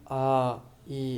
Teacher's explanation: ಹಾಗಾದ್ರೆ ದೀರ್ಘ ಸ್ವರ ಅಂದ್ರೆ ಆ ಈ ಅಂದ್ರೆ ಇಲ್ಲಿ ಉಸಿರನ್ನಿ ಎರಡು ಮಾತ್ರೆ ಕಾಲ ಉಸಿರನ್ನು ಎಳೆದುಕೊಳ್ತಾ ಹೋಗಬೇಕು